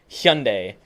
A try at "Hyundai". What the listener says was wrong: You never pronounce it with a hard Y. Why? it sounds dumb.